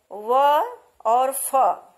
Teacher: व और फ व्यंजन वर्णों को बोलने में दांत और ओठ दोनों का प्रयोग एक साथ किया जाता है, अतः इन्हें दंतोष्ठ व्यंजन कहते हैं।